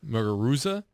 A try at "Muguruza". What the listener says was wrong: You don't even pronounce a Z. It's pronounced a TH. Muguruza.